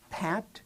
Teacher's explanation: If you put your uh hand right in front of your mouth and you pronounce pat. When you say pat, you will feel the burst of air that you get from stopping the airflow and then starting that P sound